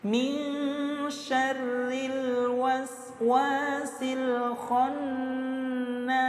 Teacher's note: waqaf pada huruf sin, maka di sini nas terbaca panjang, boleh 2 harokat atau 4 harokat atau 6 harokat. Yang saya praktekkan 6 harokat. · ada nun tasydid, maka hukumnya gunnah musyaddadah, didengungkan selama 2 harokat